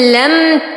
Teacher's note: لم ميم ساكنة وبعدها تاء فالحكم إظهار شفوي لا يحتاج إلى غنة